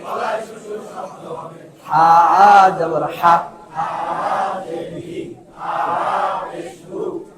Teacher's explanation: বড় হায়ের উচ্চারণে গলায় শোষ শব্দ হবে